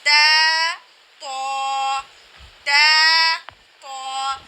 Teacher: ہم نے حروف تہجی کی تختی میں پڑھا تھا کہ تا اور طا کا مخرج ایک جیسا ہے، لیکن ان کا واضح فرق کس طرح سے کیا جائے گا کہ تا کو باریک آواز میں پڑھا جاتا ہے اور طا کو موٹی آواز میں پڑھا جاتا ہے